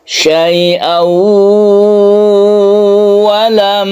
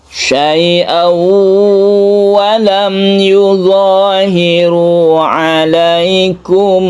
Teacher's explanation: Idgham bi gunnah itu adalah idgham yang disertai dengan dengung. Tanwin di sini masuk ke huruf wawu. Ada tasydid wawu, ketika bertasydid ini kita panjangkan.